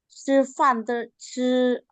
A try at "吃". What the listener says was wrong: Nah, yang kedua ini Ibu bantu dorong ada angin ya. Ya, saya tahu ya karena kita spellingan bahasa Indonesia itu nggak ada dorongan angin.